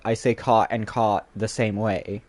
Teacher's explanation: words like cot referring to like a bed and caught referring to like catching something are pronounced the same. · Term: cot-cot merger